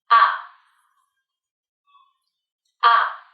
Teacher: put your tongue low and between the back and middle of your mouth then make a short voiced sound with your mouth open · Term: up sound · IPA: /ʌ/